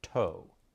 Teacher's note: the tongue moves up in the mouth with the tip of the tongue striking the dental Ridge that's where the teeth meet the roof of your mouth in